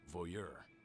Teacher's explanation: I have never heard someone pronounce it voyeur with the emphasis on the second syllable